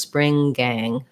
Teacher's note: If I had to say spring gang, it does link, but it doesn't, I don't put a G on spring. So it's just spring gang.